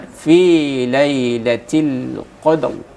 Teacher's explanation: ada huruf ro, maka ro-nya dibaca dengan tafkhim.